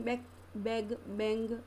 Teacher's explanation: In all these sounds, the back of the tongue is raised to touch the soft palate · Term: Velar